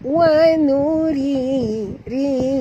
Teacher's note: ri di sini mat tabi'i dan ra tarkik tipis. Jangan baca wa nuri, bukan ri bunyi dia, tapi tipis.